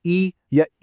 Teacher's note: आवाज एक बहुत ही तंग रास्ते से बाहर निकलती है। यह आ वाली विवृत साउंड से बिल्कुल उल्टा है। · अच्छा, जरा ई या ई बोलकर देखिए, देखा मुंह ज्यादा खुला ही नहीं। मतलब ये कि संवृत स्वरों को प्रोनाउंस करते टाइम मुंह करीब करीब बंद ही रहता है। इससे होता यह है कि आवाज एक बहुत ही तंग रास्ते से बाहर निकलती है।